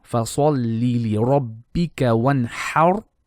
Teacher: ra is going to be heavy because of the fatha before on the ha.